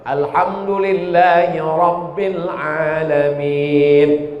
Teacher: Ra-nya mesti tafkhim tebal